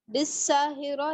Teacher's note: سین جو ہے اس میں سیٹی ہے اور باریک پڑا جائے گا